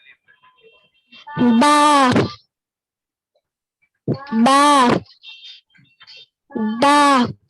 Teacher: नहीं बा पूर नहीं पढ़ा जाता, ठीक है, हल्की आवाज से पढ़ा जाता है